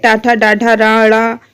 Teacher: ट वर्ग में हमारा मूर्धन्य व्यंजन होता है